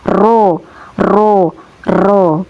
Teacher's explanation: Huruf ro ini ya keluarnya dari ujung lidah yang menempel pada langit-langit mulut atas.